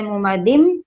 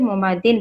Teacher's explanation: दाल के नीचे जो ज़ेर है, तनवीन है, उस तनवीन को हमें मिलाना है मीम में। यहाँ भी अगर हम इदगाम करेंगे तो ऐसे पढ़ा जाएगा फी आमदिम मुमद्ददा।